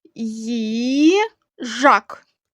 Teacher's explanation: наступний склад Жак він наголошений наголошений голосний звук а